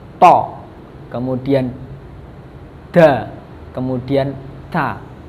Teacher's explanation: keluar dari ujung lidah bertemu dengan gigi bagian atas